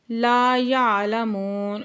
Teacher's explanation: وقف کی صورت میں نون کو ساکن کر دیں گے